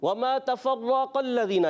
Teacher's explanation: وما تفرق الذین، یہاں پر را مشدد ذرا رک کر ادا کریں گے، قاف کو موٹا رکھنا ہے